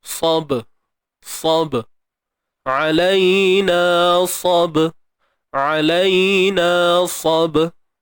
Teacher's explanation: Cuma pastikan kita tidak mengabaikan lantunannya. Sifat qalqalah. Qalqalah apa? Sughra. Lantunan yang kecil ataupun lemah.